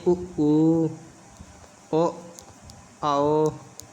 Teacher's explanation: उ ओ आओ को जब आप बोलेंगे तो हमारे ओंठ क्या हो जाते हैं, गोलाकार, इसीलिए इसे वृत्तमुखी स्वर कहते हैं।